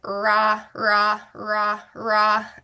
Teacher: focusing on those lips staying apart and that hard R · those lips might turn into a W and you might get whoa